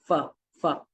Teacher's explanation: when we produce the f sound, we use the upper teeth, right, upper teeth and the lower lips, f, f. So here what we do is we study the differences in production of sound of f and p, right.